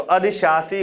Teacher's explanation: यहाँ पर दंत सा होगा लास्ट में, इसमें पहले तालव्य शा आएगा और लास्ट में दंत सा आएगा, तो अधिशासी होता है